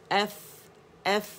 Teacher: اور فا کے لیے ہم کیا کرتے ہیں کہ جو ہمارا بطن شفت السفلی ہے, یا نچلے ہونٹ کا جو پیٹ ہے گیلا ہے, اسے اس کو اٹھا کے دانتوں کے ایجز پہ ہم لگاتے ہیں, ٹھیک ہے, نرمی کے ساتھ.